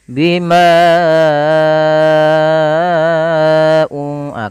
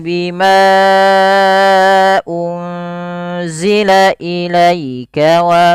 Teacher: cukup empat atau lima harakat saja untuk Mad Jaiz